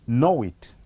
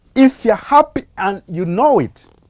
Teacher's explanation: That tends to form or to insert a glide in between the two. So at this point, we will instead insert this glide w, and altogether the two words will read as know it.